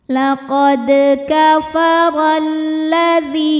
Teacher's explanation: sukun dan lam berharakat fathah maka huruf syamsiahnya adalah huruf lam lam yang pertama tidak dibaca atau biasa disebut dengan Idgham